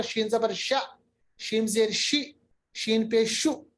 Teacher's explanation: तो ये जो सिफत है शीन की, इसको हम कहते हैं सिफत तफशी। मतलब आवाज का हवा में प्रोमिनेंट होना, आवाज का हवा में फैलना, और ये सिफत शीन की है। और ये सिफत शीन में हमेशा है, मगर ये प्रोमिनेंट उस सूरत में होती है ज्यादा जब शीन पे तशदीद या सुकून।